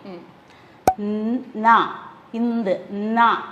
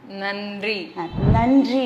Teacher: அந்த நாவ நுனி நாக்கு கடிச்சு தான் உச்சரிக்கணும்